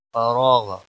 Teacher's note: کھینچ کر پڑھیں گے، فراغ را کو بھی موٹا پڑھیں گے، غین پر قلقلہ نہیں ہونا چاہیے، غین کو بھی موٹا پڑھیں گے